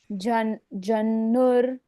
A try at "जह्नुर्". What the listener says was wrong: जह्नुर में क्या किया हमने? ना के ऊपर रेफ की मात्रा है और र बोल दिया।